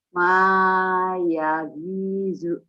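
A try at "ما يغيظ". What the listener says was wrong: Yaghinya agak susah ya. Ma yaghizu. Ma yaghizu. Zo. Ma yaghizu. Agak sedikit susah.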